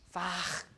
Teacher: H here at the end after a back sound. So you will have X instead. So X, fach, like that. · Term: fricative